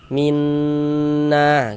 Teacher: Kemudian dighunahkan. Maka di bagian minnya itu suaranya itu kita tahan kita panjangkan sejenak ya. Minna kita tahan sebentar kira-kira sepanjang dua harakat. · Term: idgham bighunah